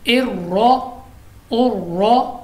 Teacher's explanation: रॉ को पूरा पढ़ेंगे क्योंकि रॉ पर ज़बर है